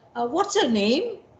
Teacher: But if you see a child lost on the road crying, you would say, what's your name? So that's the rising tone, which shows concern, which shows encouragement, which shows warmth and care.